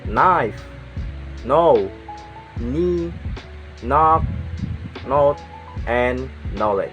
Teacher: K is not pronounced when it comes before an N